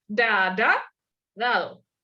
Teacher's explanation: Al lado de eso tenemos dado, en el que tenemos, en esta palabra tenemos la primera, que es oclusiva dental, y la segunda, que es aproximante dental